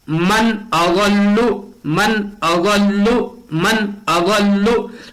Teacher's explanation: نون ساکن کے بعد حمزہ حروف حلقی کے 6 حرفوں میں سے آیا ہوا ہے، اس لیے نون کو ظاہر کر کے بلا غنہ کے جلد پڑھیں گے۔ اغلو، لام کے اوپر تشدید آئی ہوئی ہے، تشدید والے حرف کو 2 بار پڑھا جاتا ہے، تشدید والے حرف میں ایک قسم کی سختی ہوتی ہے۔ · ہم وہاں پڑھ رہے تھے انت، نون کا جو مخرج تھا، نون کے مخرج سے زبان کو ہٹا کر پڑھ رہے تھے، لیکن یہاں جو نون کا جو مخرج ہے وہاں زبان کو لگائیں گے اور نون کو ظاہر کر کے پڑھیں گے، شو کر کے پڑھیں گے۔